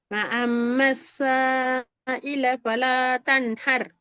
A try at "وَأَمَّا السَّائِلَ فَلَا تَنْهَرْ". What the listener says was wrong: நீட்டுறது போதாது.